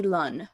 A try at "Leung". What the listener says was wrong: Leung with a G on the end. Leung.